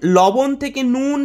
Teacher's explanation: ল কোথাও কোথাও ন রূপে উচ্চারিত হয়